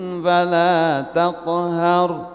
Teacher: setelah yang pertama tinggi langsung turun. فَلَا تَقْهَرْ langsung turun.